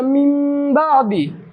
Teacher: یہاں پر نون ساکن کے بعد با آیا، یہاں پر اقلاب ہوتا ہے، اور یہاں پر بھی غنہ ہوگا